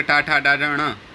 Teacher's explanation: इसी प्रकार से वरदराजाचार्य जी ने अगला जो सूत्र दिया वो दिया ऋटु रसाणाम मूर्धा, री है, और टू माने टवर्ग, टा, ठा, डा, ढ, ण, और र और श, इनका क्या है उच्चारण स्थान? मूर्धा।